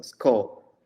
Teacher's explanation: S plus K, no vowel in between. So sco, like we Okay.